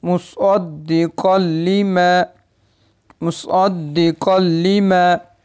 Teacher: इदगाम तो होगा लेकिन गुन्ने के बगैर पढ़ेंगे